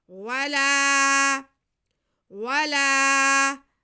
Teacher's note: عنہم العذاب، عنہم العذاب ولا ہم، واو پہ زبر، لام پہ زبر اور ساتھ میں الف، یہ الف مدہ ہو گیا. لام کی آواز کو ہم کھینچیں گے